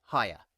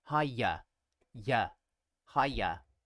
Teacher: with the e sound you have to put your tongue into the same position as you use for a y consonant